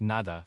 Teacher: Your tongue touches the back of your front teeth, almost like a soft sound, but not quite. It's more dental like nada for nothing.